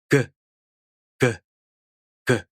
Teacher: Velar means the soft palate. So when you make the G sound, the back part of your tongue stretches up to the soft palate. And stop means you first stop the airflow at the soft palate, and then you make a sudden release of the air. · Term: voiced Velar stop sound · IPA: [g]